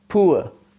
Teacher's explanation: the tongue glides from uh back half close to center half open